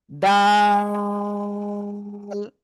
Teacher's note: জিহ্বার আগা উপরে দুই দাঁতের গোড়ায় লাগবে, লাগিয়ে আমরা উচ্চারণ করব দাল,